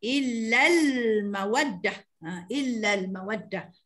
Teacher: Menzahirkan bunyi alif lam situ ya. Alif lam tu kita jelaskan, menzahirkan sebutannya pada lam mati situ. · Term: Alif lam qamariyah